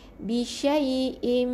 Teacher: rapatkan bibir 2 harakat dengung, lepas tu baca huruf seterusnya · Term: idgham bi ghunnah